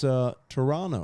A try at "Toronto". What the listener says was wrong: Toronto. No T in the end.